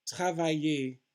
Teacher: The ER, as I said, is always pronounced A, which is a pure A. It's not a diphthong.